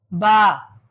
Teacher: দুই ঠোঁটের ভিজা জায়গা থেকে হবে বা